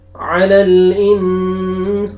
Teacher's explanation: اخفا نون ساکن کے بعد سین آ رہے ہیں, اخفا کریں گے